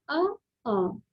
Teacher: आप बोल के देखिए अ, तो आपका गले से आवाज आ रही है और जीभ के नीचे का भाग यूज किया जा रहा है